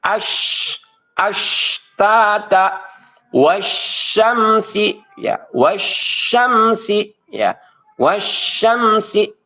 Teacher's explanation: suara dan hembusan itu menyebar di dalam mulut · tersebarnya nafas dan suara di dalam mulut ketika membunyikan huruf shin. Tuh ya. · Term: tafasi, tafasyi